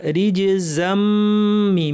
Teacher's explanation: রিজ, জিমে কলকলা, রিজ জাম্মি, মিমের উপর তাসদিদ লম্বা গুন্না